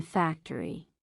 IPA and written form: ˈfæktəri (Factory)